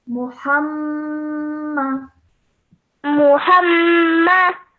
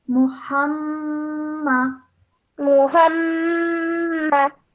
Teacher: just hold that meme sound in your nose for a bit longer. Muhammad.